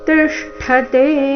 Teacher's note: ಆತ್ಮನ್ಯೇವಾವತಿಷ್ಠತೆ ತಿಷ್ಠತೆ ಟಿ ಮೇಲೆ ಆಘಾತ, ಮುಂದೆ ಅರ್ಧಶ ಮೂರ್ಧನ್ಯಶ ಪೂರ್ತಿ ಠ ಮಹಾಪ್ರಾಣ ರಸ್ವ ಠ ಸ್ಪಷ್ಟವಾಗಿ ಕೇಳಿಸಬೇಕು.